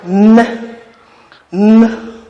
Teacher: In articulating this sound, N, you'll find out that when you pronounce that sound correctly, the tip of the tongue touches the alveolar ridge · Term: alveolar nasal sound